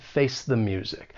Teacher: you're going to use that weak the with the schwa sound